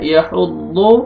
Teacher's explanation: ضاد کو اپنے موٹا کر کے پڑھنا ہے